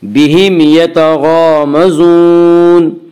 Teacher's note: یعنی میم کو ظاہر کر کے پڑھیں گے۔ بہم یتغامزون، غین کو پر پڑھیں گے، غین حروف مستعلیہ میں سے ہے۔ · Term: اظہار شفوی